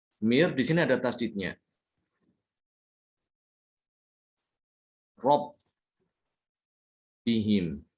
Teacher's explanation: Dalam tulisan itu ada huruf nunnya, tapi dalam pembacaan nunnya itu hilang. · Jadi benar-benar nunnya itu hilang masuk ke dalam huruf ro, mir rabbihim. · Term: idgham